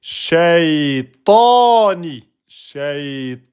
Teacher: Ici, vous avez prolongation. Alif, qui suit la fatha. C'est une voyelle longue, prolongation, deux temps.